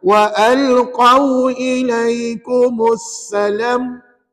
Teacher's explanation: Salam tu jangan baca panjang.